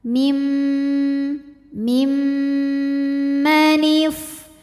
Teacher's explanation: gunah musyadadah atau wajibul atau mim musyaddadah sebab mim bertasdid ya cara membaca huruf mimnya ini adalah didengungkan jadi bunyi m kita tahan sampai ada suara masuk hidung kurang lebih dua harakat